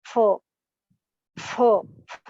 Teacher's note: दंतोष्ठ्य होते हैं जहां दांत और ओठ दोनों का प्रयोग किया जाए।